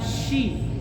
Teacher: kalau syin itu ada berhamburan nafas di dalam mulut